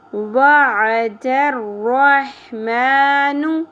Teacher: واو عین سنگل حرکات، عین وسط حلق سے